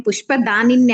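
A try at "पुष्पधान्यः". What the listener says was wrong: పుష్పధాన్య. Okay, మీరు ఒక నా ఎక్స్ట్రా యాడ్ చేశారా? నియే న్యహ అవుతుంది అనమాట. లేఖని లేఖన్య అయింది కదా, అట్లా. పుష్పధాని పుష్పధాన్య.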